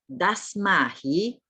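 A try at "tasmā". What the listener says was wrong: Not Dasma. It is Tasma. T. Tasma.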